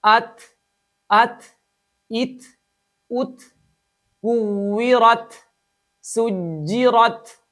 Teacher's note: ता के साथ-साथ हा की आवाज को शामिल करके ताए साकिन को अदा करते हैं। जबकि इसके अंदर दो बड़ी गलतियां हैं। · تا کے ساتھ ساتھ ہا کی آواز کو شامل کر کے تائے ساکن کو ادا کرتے ہیں، جبکہ اس کے اندر دو بڑی غلطیاں ہیں۔